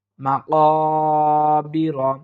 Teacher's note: খালি আলিফ মদের হরফ এক আলিফ পরিমাণ আমরা টেনে পড়ার চেষ্টা করব